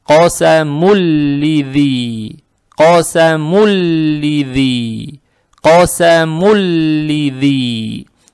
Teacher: «танвин» превращается в эту букву «лам», поэтому она удваивается. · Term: идгам без гунны